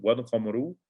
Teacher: والقمر, والقمر, so the sukoon is on the lam, والقمر, you pronounce the lam because it is a moon letter